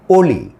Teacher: অ কিন্তু আর অ থাকলো না হয়ে গেল ও কারন্ত ও এর মত · অ আর অ এর মত থাকে না। ও এর মত। একেবারে পুরোপুরি ও তা কিন্তু না। ও এর মত। এইজন্য এটাকে বলে ও কারান্তর উচ্চারণ হয়।